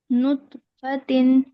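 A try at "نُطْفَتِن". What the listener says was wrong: तो पे कलकला कीजिए। नुतफतिन जी अभी भी कलकला नहीं आ, एक और बार हम लोग कोशिश करते हैं।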